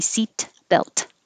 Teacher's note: you hold your tongue in the t position but you don't release it to say seat belt